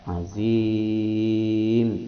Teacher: Lazulmun azim mad arid lisukun yang panjangnya antara 2 sampai 6 harokat.